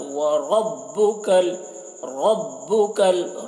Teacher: यहाँ पर र को पुर पढ़ेंगे, र में ज़बर है